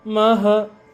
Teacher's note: So Ma and Ha is not separate syllable, it's 1 syllable.